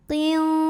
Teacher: Maka dibaca tebal, pangkal lidah terangkat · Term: tafkhim